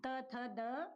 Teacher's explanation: त थ द क्या होते हैं दंत होते हैं